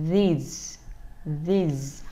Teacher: Âm cuối là âm z, cho nên chúng ta để hai răng lại và không cho hơi ra, nên nó sẽ bị rung ha.